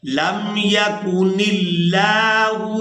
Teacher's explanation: نون کو لفظ اللہ کے لام کے ساتھ ملائیں گے تو لفظ اللہ کے لام کو باریک ادا کریں گے، اور لفظ اللہ کے لام کو ہم نے کھڑی زبر کی وجہ سے کھینچ کر ادا کرنا ہوتا ہے۔